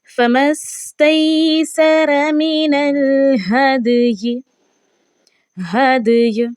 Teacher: दाल पर कलकला करना है और या को हमने अपनी वॉइस के ज़रिए से ज़ाहिर करना है।